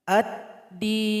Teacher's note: Di sini ada idgham syamsiyah. Contoh di sini lam sudah bergabung 100% kepada huruf dal. Sehingganya tidak dibaca lagi.